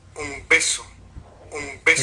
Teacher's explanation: Como vemos, y como ya se ha comentado con más detalle, ¿verdad?, hay un espacio que es el espacio de la oclusión, ¿verdad? Pero a diferencia de la oclusiva áfona, en este caso se manifiesta espectrográficamente el correlato gráfico y acústico de la vibración de cuerdas vocales, que es esta zona, este formante que se dibuja acá, ¿verdad?, aquí, que le llamamos en jerga de fonética la barra de sonoridad. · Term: bilabial oclusiva sonora